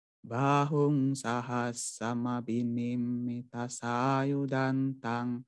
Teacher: Bah ini panjang, hung panjang, sa pendek, has panjang karena ada double konsonan. Sebelum double konsonan disebut panjang.